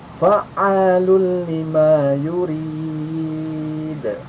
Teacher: Ini idgham bila guna, masuk tapi tanpa mendengung.